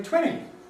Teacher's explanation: this reduction of nt to n seems to apply British English only to a very small number of words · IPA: [ˡtweni]